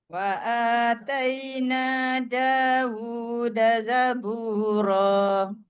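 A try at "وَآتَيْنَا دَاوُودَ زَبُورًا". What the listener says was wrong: sikit zabura biar tebal zabura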